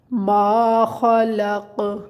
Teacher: اسے ما نہیں پڑھنا، مطلب ناک میں نہیں لے کے جانا